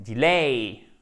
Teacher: Si automatiquement vous faites bien l'accent tonique sur la seconde syllabe, vous allez mieux faire ou bien faire la diphtongue parce que si vous faites l'accent tonique, suivez-moi, sur la première syllabe, vous ne pourrez pas faire correctement la diphtongue.